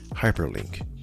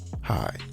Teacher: The prefix hyper, as in hyperlink, or the adjective hyper, puts an emphasis on the first syllable